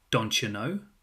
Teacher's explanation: Which becomes don't you. The T and Y sounds combine and produce a ch sound. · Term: assimilation